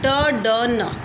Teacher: T, d, n produced by the tip of the tongue touching the alveolar ridge. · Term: alveolars